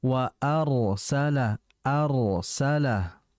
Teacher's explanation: Kalau arsala itu salah karena tipis. Harusnya dibaca tebal. · Perhatikan getaran ra-nya dengan ketebalannya. Jadi fokus bagian lidah depan dengan belakang.